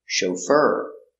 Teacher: The accent is on the second syllable.